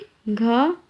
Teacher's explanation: घ एक कंठ व्यंजन है जिसका उच्चारण कंठ से होता है। इसके उच्चारण में जीभ तालु को स्पर्श नहीं करती